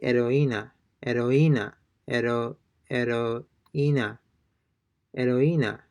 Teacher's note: Notice that they're not pronouncing the H. It appears to be silent.